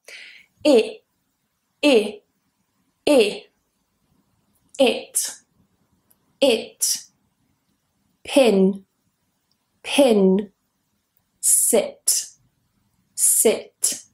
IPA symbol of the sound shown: ɪ